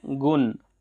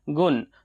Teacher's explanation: इसमें ण का प्रयोग ना करके सीधे-सीधे न का प्रयोग हो रहा है